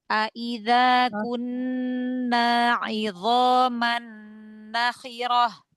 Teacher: nak panjang nak yang pertama panjang nak yang kedua jangan panjang